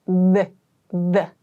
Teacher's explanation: So when you do this, it sounds like the. So your tongue is between your teeth, and your vocal cords vibrate when you make this TH sound, this type of TH sound. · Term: voiced TH sound